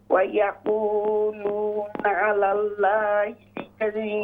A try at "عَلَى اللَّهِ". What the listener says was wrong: अला अल्लाह, लाम को मोटा कीजिए। अला अल्लाहिल कज़िब